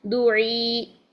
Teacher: یا ساکن سے پہلے زیر ہو تو ہم اس کو 2 حرکات تک لمبا کر کے پڑھیں گے وقف کی صورت میں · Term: یائی مدہ